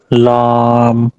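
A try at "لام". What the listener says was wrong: আপনি আরেকটু ক্লিয়ার করেন, আপনার মুখের ভিতরে আটকে রাখতেছেন মনে হচ্ছে পড়াটা, ছেড়ে দেন একদম ক্লিয়ার। লাম, বড় করে উচ্চারণ করেন। লাম লাম,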